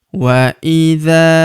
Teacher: huruf dza kita panjangkan dua harakat karena terdapat tanda alif di depannya